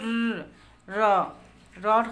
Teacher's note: কম্পনের মাধ্যমে যে ব্যঞ্জন ধ্বনিটি উচ্চারিত হয় সেটা হচ্ছে কম্পিত ব্যঞ্জন।